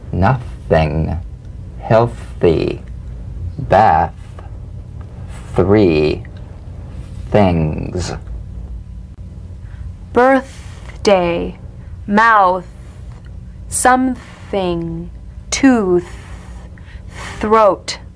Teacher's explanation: the unvoiced tongue point to teeth fricative consonant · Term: voiceless th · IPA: θ